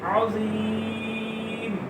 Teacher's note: یا ساکن سے پہلے زیر لمبا کریں گے